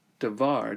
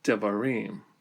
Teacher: the accent falls at the end of the word, this pulls it further away from this first vowel, the comets, and thus the vowel is reduced to a vocal schwa.